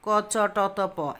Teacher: বর্গের প্রথম বর্ণ অর্থাৎ ক, চ, ট, ত, প, এই সবগুলোই কিন্তু অল্পপ্রাণ ধ্বনি, অর্থাৎ এই ধ্বনিগুলো উচ্চারণের সময় বাতাসের চাপটা কম থাকে